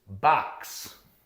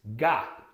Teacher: I'm dropping my jaw. I'm producing the ah sound